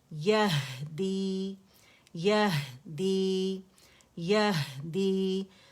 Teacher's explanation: یا مدہ بنا اور یہ الجوف سے ادا ہو رہا ہے